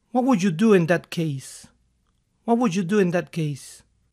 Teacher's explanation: What would puede sonar a what would, en algunos casos hasta la D de would puede que desaparezca o se modifique